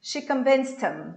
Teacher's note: Eu cortei o H do him e isso virou convinced him. Porque eu tinha um T ali, que era o som final, aí juntei com esse him, que eu cortei o H.